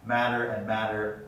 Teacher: in my dialect when you hear me speak matter and matter are exactly the same pronunciation because both voiced and voiceless stops undergo flapping